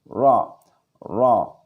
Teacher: Keluarnya lancar, ringan, lentur ujung lidah condong ke punggung ya, ke punggung lidah. Satu kali getaran halus ujung lidah ya, tidak boleh banyak getaran.